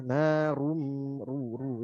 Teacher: tetap ru-nya tebal, huruf vokal u ya. Jangan nanggung.